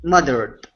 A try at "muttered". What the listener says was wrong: move your tongue back from your teeth okay you're saying mothered instead of mothered